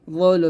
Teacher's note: রা পেশ রো, রটা heavy করে রো